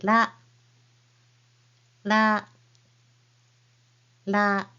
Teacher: say la with hitting the roof of your mouth with the tip of your tongue as if you're saying D okay keep the mouth shape of a and say la la